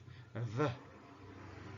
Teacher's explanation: We can find those long sounds, for example, sh and sh. Then fricative and labiodental, this is v